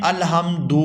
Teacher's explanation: یہ لفظ ہے الحمدو، اس کو ہم اگر کھینچ کے پڑھیں الحمدو تو یہ بھی طریقہ غلط ہے، یعنی ہم حرکت کو اس کی مقدار سے زیادہ کھینچ کے ادا کر رہے ہیں۔ اور اگر ہم اس کو پڑھیں الحمدو تو یہ ہم حرف میں تبدیلی کر رہے ہیں، اس میں بگاڑ پیدا کر رہے ہیں، اس کو صحیح نہیں ادا کر رہے، تو یہ طریقہ بھی مجہول ہے۔